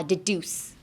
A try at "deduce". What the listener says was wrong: Deduce. おー、deduce. でも deduce そんな伸ばさないんですよ。Don't elongate it that much. It's deduce. だから、ピュピュピュピュピュ deduce, deduce, deduce. deduce, deduce, deduce. ですね。deduce, deduce, deduce. That's the tempo you want, and that's the pronunciation you want as well.